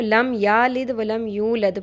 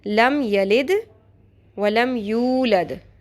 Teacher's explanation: یو لمبا ہوگا لیکن یا زبر یا جو پہلے آ رہا ہے وہ شارٹ ہوگا.